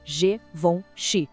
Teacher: O G no começo tem aquele som suave de J, como na palavra gente. Depois vem um som bem nasal, von. E para fechar, chi.